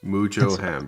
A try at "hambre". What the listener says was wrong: The H is silent. Come on.